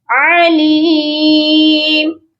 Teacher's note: عین کی آواز حلق کے مڈل پارٹ سے آئے گی۔